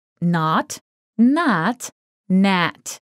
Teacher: in or not it's pretty close to the English word not the Dutch variant ah is a little more forward in the mouth than the American ah so your tongue is a little bit more towards the front of your mouth